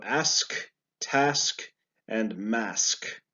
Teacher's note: So it's sk, not ks, but sk.